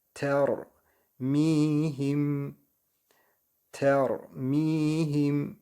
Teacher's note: Miyi uzatıyoruz. Harekesiz ya var.